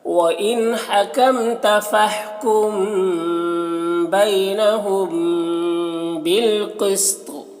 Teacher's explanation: بالقسط، قوف کو پر پڑھیں گے، اور یہاں پر وقف کریں گے تو طا کا زیر سکون سے بدل جائے گا، تو طا میں قلقلہ بھی کرنا ہے اور طا کو پر پڑھنا ہے